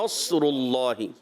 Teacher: نے ماشاءاللہ پڑھا، مگر مد اصلی ان کی بھی تھوڑا سا زیادہ حروف مدہ کو کھینچ دیتے ہیں، اور نصر اللہ صاد کو ہلا دیا، نصر اللہ میں صاد کو نہیں ہلانا، نصر اللہ، تو کیا پڑھنا ہے؟ صاد بغیر ہلائے آپ نے موٹا بھی پڑھنا ہے